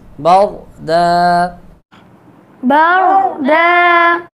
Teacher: را کو موٹا پڑھیں گے، را ساکن سے پہلے زبر ہے اور دو زبر کی تنوین کو وقف میں الف سے بدل دیں گے اور ایک الف کے برابر لمبا کریں گے.